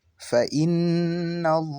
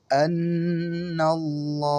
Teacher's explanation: Jadi, semua harus dibaca tebal karena sebelum lafaz Allah terdapat huruf yang berharokat fathah ataupun dhammah. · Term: tafkhim atau tebal